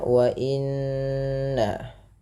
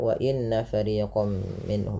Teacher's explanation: tahan bunyi suara nun yang berharokat tasydid karena ia dikategorikan bacaan gunnah. Beberapa di antara kita kadang terlupa di dalam membaca gunnah, tidak menahan bunyinya.